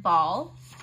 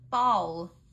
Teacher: the back of your tongue would be arching up a little towards your soft palate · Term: dark l sound